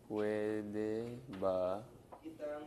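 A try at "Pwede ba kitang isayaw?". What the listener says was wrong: masayaw. Kita. Masayaw. Pero kailangan ng NG. Kitang.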